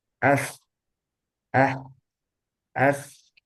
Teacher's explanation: kalau kita taruh tangan kita di depan mulut kita itu ada hembusan udara